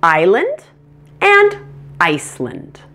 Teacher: They are both two-syllable words with the primary stress on the first syllable. The second syllable has weak stress in both words, so the A in land will be pronounced as a schwa.